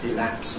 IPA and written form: ɪˈlæps (elapse)